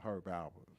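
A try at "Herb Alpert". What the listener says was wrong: Herb Alpert. You got to pronounce the word P. Alpert.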